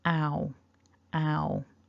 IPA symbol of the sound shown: aʊ